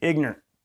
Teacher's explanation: There's just one vowel in ignorant if you're from Oklahoma. It's I-G-N-R-T. · Maybe you don't even pronounce the T.